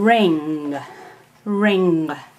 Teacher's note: the velar nasal, produced way in the back, is the sound ng